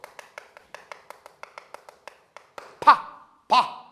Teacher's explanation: 파열음은 공기 중에 있는 소리가 딱 있다가 맞닥뜨리면서 터지는 소리예요. 파 이렇게 입술이나 이런 게 붙어 있다가 맞닥뜨리다가 공기 중에서 팍 터지는 소리가 파열음입니다. 뭔가 우리 이런 게 있다가 균열돼서 팍 파열하는 거죠.